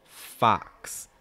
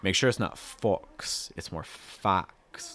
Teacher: Not oh, it's more ah. Wide, really wide mouth, back in front of your tongue, down. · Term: ah sound